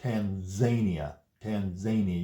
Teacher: You can see the N and the Z are made in the same location.